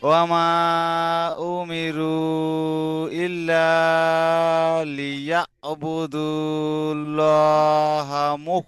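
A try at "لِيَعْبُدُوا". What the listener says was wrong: এখানে লিয়া বুদু বলে টান হয়ে যাচ্ছে, কিন্তু বাপের বু, দাল লাম পেশ দুল হবে, বুদু বলে টান হবে না, বুদুল লহি।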